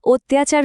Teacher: অতির ই আর আচারের আ দুটো মিলে কিভাবে জফলা বা ইয়া সাউন্ড তৈরি করে অত্যাচার হয়ে গেল